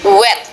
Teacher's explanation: Back of tongue raises to velum, but not too close, and lips are rounded